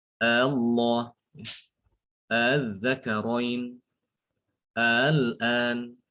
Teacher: Cara yang kedua adalah dengan mentasilkan hamzah wasal, ya. Hamzah wasal dibaca tasil, maksudnya dibaca antara hamzah dengan alif